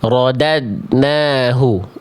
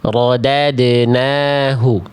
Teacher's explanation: Yang pertama betul-betul tidak dipantulkan huruf dal sukunnya.